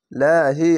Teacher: ডান পাশের অক্ষরের নিচে জের আছে তার জন্য পাতলা করে হবে